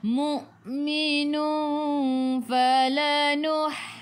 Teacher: Jadi ikhfa hakiki, dengung 2 harakat bawa ke sisi huruf fa.